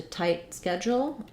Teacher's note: tight has the I diphthong